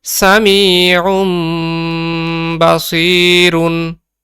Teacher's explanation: নুনে সাকিন অথবা তানউইন এর পরে যদি বা আসে তখন আমরা ওই নুনে সাকিন অথবা তানউইন কে মিম ধরে গুন্না করে পড়বো। তার মানে নুনের উচ্চারণ গুলাকে আমরা তখন মিম উচ্চারণ করব। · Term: ইকলাবের গুন্না